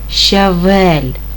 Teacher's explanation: слово щавель складається з двох складів другий наголошений